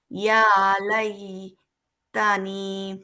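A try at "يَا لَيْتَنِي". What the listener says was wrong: ইয়াতে একটা আলিফ আছে।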